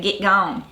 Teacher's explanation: another thing that happens with that short E is it modifies to an I sound in words like get. So you say get gone.